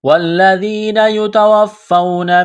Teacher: واو ساکن سے پہلے زبر ہے، حروف لین واو ہے، اس کو جلدی پڑھیں گے، نرمی کے ساتھ